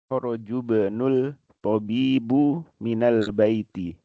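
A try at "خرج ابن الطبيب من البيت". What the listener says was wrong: Kharaja ya, jimnya di fathah. Kharajabnu.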